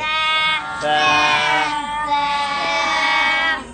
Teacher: تا تا اس کے بعد والا حرف وہ بھی اتنا ہی لمبا کرنا ہے جس کے اوپر تین نقطے ہیں، لیکن زبان کی نوک آپ نے باہر نکالنی ہے. تا زبان کی نوک باہر نکالے، دانتوں سے اس کو پکڑے، اس کے بعد ادا کرے